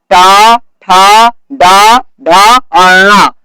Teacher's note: मूर्धन्य वर्ण का उच्चारण स्थान मूर्धा है।